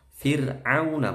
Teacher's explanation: ro' sukun sebelumnya ada kasrah roknya itu tipis tarqiq meringis Firaun bukan Firaun tapi au Firaun dan Mad Arid lissukun